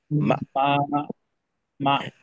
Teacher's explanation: টান হবে না, হ্যাঁ, শক্তভাবে হামজার মাখরাজ আটকাবে, মা, এই মা, ধরনের। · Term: হামজার জজমটা